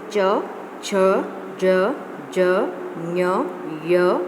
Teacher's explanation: जो हमारे मुंह में जीभ के ऊपर का भाग होता है, जहाँ पर जीभ कभी कभी हम वर्णों को बोलते हैं और टच करती है, उसे तालु कहते हैं. जिन वर्णों को उच्चारित करते समय हमारी जो जिह्वा है वह तालु को टच करती है, उन वर्णों को हम पैलेट मीन्स तालु कहते हैं